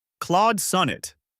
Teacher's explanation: listen for the aw in Claude and the short O in sun